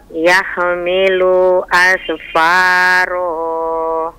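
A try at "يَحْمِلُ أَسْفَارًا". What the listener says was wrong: Nah, bukan asu. Jangan sekali lagi, jangan dipantul. Kalau dia bukan huruf yang boleh dipantul, sekali lagi, cuma 5 huruf ba, jim, dal, kof, dan huruf to. Ba, jim, dal, dan huruf to dan kof. Hanya ini saja.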